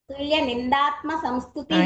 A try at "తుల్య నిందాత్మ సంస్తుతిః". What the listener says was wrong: ఇందాక కూడా మా మా ఒత్తు చెప్పలేదు, ఇప్పుడు చెప్పలేదు. సరే, ఓకే, అది కరెక్షన్ చూసుకోండి.